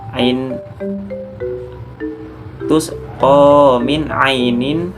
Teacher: huruf nun berharakat kasroh tanwin bertemu dengan huruf hamzah. Dibaca jelas tidak berdengung sama sekali. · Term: ijhar